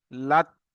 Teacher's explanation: লাত বলার সময় দেখেন যে লাত বলছেন, বলার সঙ্গে সঙ্গে দেখেন আপনার জিহ্বা উপরে তালুর দিকে লেগে যাচ্ছে, এখানে এসে এ- আটকে যাচ্ছে বা ওখানে গিয়ে ঠেকে যাচ্ছে, গিয়ে জমে যাচ্ছে দেখেন।